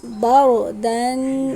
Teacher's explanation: ہے۔ با را زبر بر، دال دو زبر دن، بردن، یہاں را کو موٹا پڑھا جائے گا، اس سے پہلے زبر ہے۔